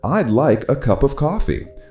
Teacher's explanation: the stress naturally falls on like, cup, and coffee